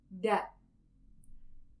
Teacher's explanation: la punta de la lengua debe situarse en la parte delantera del paladar, es decir, justo detrás de los dientes · En la R suave D, la lengua toca una única vez el paladar, da. Y en la R fuerte, la lengua rebota varias veces en el paladar.